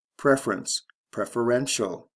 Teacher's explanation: stress shift first to third syllable